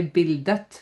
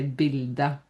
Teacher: But we do not pronounce the t, the t is silent. Okay, so we don't say bildet, we say bilde.